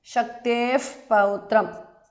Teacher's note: Thasma pranah Vyasam Vasishthanaptaram because of Sandhi. Shaktehe Visarga changes to Upadhmaniya